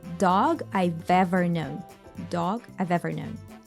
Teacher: I have known. I have is reduced to just I've, and this V sound from what is left from have, you remember, right? It gets linked to the word ever.